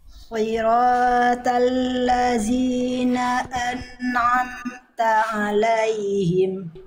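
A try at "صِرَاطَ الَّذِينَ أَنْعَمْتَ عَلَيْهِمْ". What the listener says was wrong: Bukan siratal lazi. Bukan zi, bukan zi, ya, enggak zi, tidak zi itu zai. Harusnya zal. Siratal ladzi, nah, ujung lidah disentuhkan dengan ujung gigi seri atas.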